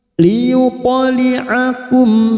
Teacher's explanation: mim sukun bertemu ain idhar safawi, kita baca jelas